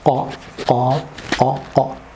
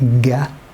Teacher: most Arabs don't pronounce this sound. They make it ga, yes, like go